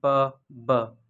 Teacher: the sound produced by bringing both lips together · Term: बाइलेबियल